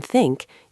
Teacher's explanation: For the th sound in think, you place your tongue tip between your teeth and blow air out gently